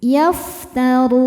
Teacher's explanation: Maka ra-nya panjang, boleh 2, boleh 4, boleh 6 harokat. Asal konsisten dalam sekali duduk. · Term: mad arid li sukun